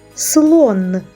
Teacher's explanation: останній звук у слові н вимовляємо твердо